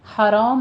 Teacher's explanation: دونوں جگہ جہاں لام ساکن ہے ہمارے پاس، مشعرل، یہ لام کو سٹاپ کرنا ہے، ریلا ریلا نہیں کہنا، ٹھیک ہے۔ حرام میں ہا وسط حلق سے ادا کریں گے، را کو پر پڑھتے ہوئے آگے الف مدہ ادا کریں گے